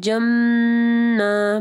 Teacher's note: تنوین ہے، اس کے بعد جیم ہے، اخفاء غنہ ہوگا، جَمًّا، میم مشدد ہے تو کامل غنہ ہوگا، یعنی پرفیکٹ غنہ ہوگا